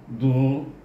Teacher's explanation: huruf dad harajnya di mana tepi lidah kita dibawa ke geraham atas